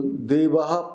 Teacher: the visarga is an aspiration of a preceding vowel and is pronounced almost like an echo, as an ha followed by the short form of the preceding vowel